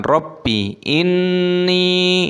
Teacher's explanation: nun tasdid hukumnya ghunnah, didengungkan dan dipanjangkan nunnya